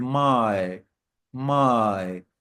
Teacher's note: it's one sound, but the mouth moves from one vowel shape to another while saying it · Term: डिफ्थोंग